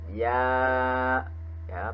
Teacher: ini termasuk ke kepada bacaan Mad Jaiz munfasil Mad Jaiz munfasil harus dibaca panjang empat atau lima ketukan